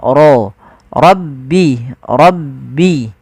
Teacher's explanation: lafal rabbi suara ro-nya ditebalkan, ro, rabbi, rabbi.